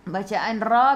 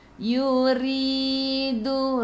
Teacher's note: Bacaan ra bila baris bawah nipis. Jadi untuk membaca dengan nipis kena senyum. Yuridu. Ri 2 harakat ada ya mad asli.